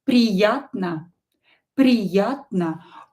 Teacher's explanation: O is not stressed. Pronounce it as A.